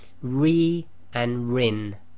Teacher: it is pronounced light, i.e. it is empty mouth, what we call empty mouth. So both of these you'd say with a nice big smile, ri and rin.